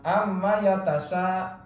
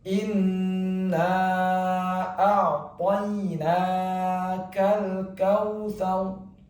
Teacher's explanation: posisi mulut dirapatkan, kemudian ditahan 2 harokat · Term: gunnah